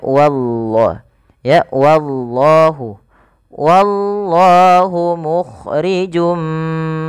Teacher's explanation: wnya ditipiskan dulu baru lafal Allah tebal